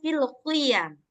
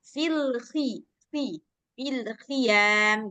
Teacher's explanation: Kho dia memang masuk huruf isti'la, huruf berat. Tapi ketika dalam posisi kasroh, dia tidak seberat ketika dia posisi fathah ataupun dhammah. Jadi nggak terlalu berat.